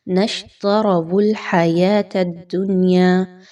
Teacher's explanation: اس میں دیکھیے تو دال کے مخرج پہ خاص توجہ دیجیے۔ دال کو آپ نے زا کی طرح سختی کے ساتھ نہیں پڑھنا، بہت سافٹلی پڑھنا ہے، نرمی کے ساتھ۔